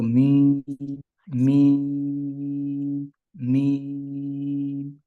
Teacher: میم کے اندر کیونکہ غنہ بھی ہوتا ہے کیونکہ تو آواز جو ہے وہ ساری کی ساری ناک میں جاتی ہے · بس ہمارے ہاں جو عموماً پاکستان میں اردو بولنے والے افراد غلطی کرتے ہیں وہ میم کو تر حصے سے ادا کرتے ہیں لیکن میم دونوں ہونٹوں کے خشک حصے سے ادا ہوتا ہے. جب خشک حصے سے ادا کریں گے تو خود بخود جو ہے وہ میم میں غنہ بھی ہو جائے گا.